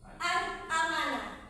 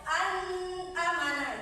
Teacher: huruf nun mati ini dibaca jelas dan tidak boleh dipanjangkan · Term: izhar